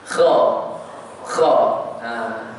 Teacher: Kha perlu tak muncul, tak payah. Buka mulut sikit. Anak tekak tu dia bergegar sikit.